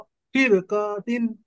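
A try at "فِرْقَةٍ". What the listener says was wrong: नहीं नहीं, थोड़ा जल्दी बोलिए इसको। काफ को खींचना नहीं है। काफ को नहीं खींचना, उसको खींचना नहीं है। काफ मुतहर्रिक है, मुतहर्रिक को खींचा जाता है, जल्दी पढ़ा जाता है। काफ को खींच दे रहे हैं आप, काफ थोड़ा जल्दी पढ़िए। फिर कतिन, फिर कतिन।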